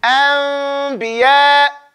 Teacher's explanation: so the lips only touch when you come out with the ba at the end of it. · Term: keep it slightly open